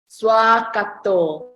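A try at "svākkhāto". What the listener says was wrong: Kato, long A. Remember Swakato.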